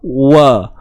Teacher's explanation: Kalau waw, ni mulut memuncung, bibir mulut memuncung. Kemudian ada satu ruangan kosong. Maksudnya bulat tu lah bibir kita.